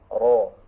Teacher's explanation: Nah, itu huruf ro. Getarannya lembut, ro, tidak boleh ro, tidak boleh kasar, ya. Ro, ya, menyentuhnya, menekannya sedang, jangan sampai berlebihan.